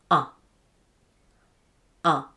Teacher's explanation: for ʌ the jaw and tongue move to a low position